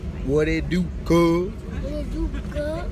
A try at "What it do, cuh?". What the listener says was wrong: Like, no, you gotta stretch the cuh out. Stretch it out. What it do, cuh? What it do, cuh? Cuh. And don't finish all of your words.